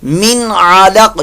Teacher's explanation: نون ساکن کے بعد عین آ گئی تو یہاں پر کون سا قاعدہ؟ اظہار کا